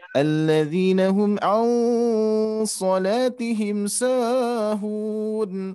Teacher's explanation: Nah, jadi ada sa-nya terlalu kepanjangan. Mungkin terbawa dengan mad arid ya.